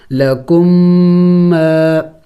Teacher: میم مشدد ہے غنہ بھی کریں گے